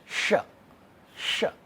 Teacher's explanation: Tongue is taking a u type shape.